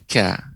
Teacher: Huruf qaf lebih dalam, mengenai langit-langit atas yang lunak. Adapun kaf mengenai sedikit dan lebih maju daripada huruf qafnya. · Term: huruf kaf